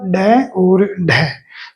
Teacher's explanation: अपनी जो जीवा है वो दो टुकड़ों में या इस प्रकार दो बार मुड़ जाती है। इसीलिए इसको द्विगुणित भी कहते हैं।